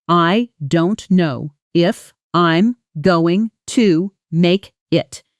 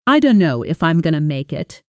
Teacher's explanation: I don't know if I'm going to make it, with don't know collapsing into dunno and going to collapsing into gonna, while the sentence stress lands hard on make it at the end. Say the slow version out loud first, then immediately shadow the fast version right after me, echoing it. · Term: heavy reduction